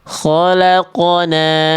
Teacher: Tafkhim itu tebal, nisbi itu artinya di beberapa keadaan huruf qafnya melemah kadar tebalnya. Tapi ketika qaf sukun dia selalu dibaca tafkhim tebal.